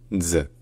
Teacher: Donc en fait c'est un z comme dans pizza, sauf que le z à la fin est prolongé pour durer une syllabe entière